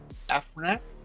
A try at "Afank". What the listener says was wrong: Afank. Yeah, there's no R.